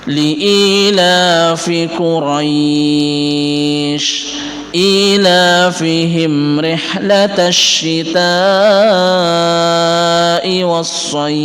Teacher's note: Soy ini mad layyin, akan tapi karena berada di akhir ayat maka kita panjangkan sampai dengan maksimal 6 ketukan.